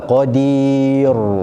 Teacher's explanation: dengar sedap tapi salah, sebab dia baca ra tebal, qadir. Ru salah, dia qadir.